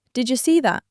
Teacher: The D and Y combine into a j sound. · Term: assimilation